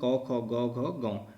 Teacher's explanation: कवर्ग की बात करें तो इसका उच्चारण क्या होता है, कंठ से होता है, और कवर्ग इसमें क ख ग घ गौ, तो ये 5 वर्ण इसमें आते हैं।